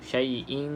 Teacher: Kemudian kita nampak dekat sini kan, yang tidak selari selepasnya bukan lam ataupun ra, maka kita baca dengan dengung. Dengung itu dengan cara ikhfa lah. Kita tak jelaskan bunyi nun tu.